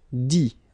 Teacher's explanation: you don't pronounce the final T